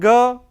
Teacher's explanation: It is voiced velar plosive.